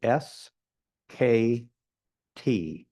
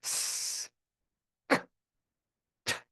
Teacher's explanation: A lot of high frequency energy without, your vocal cords don't vibrate, so you don't have low frequency energy conveying that sound